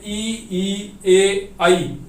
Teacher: Number 1 अग्र स्वर, जो जीव के अगले हिस्से से बोले जाते हैं उन्हें अग्र स्वर कहा जाता है, जैसे ई, ए, ऐ।